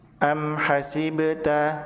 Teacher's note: Ba pada kata hasibta dibaca memantul karena ba sukun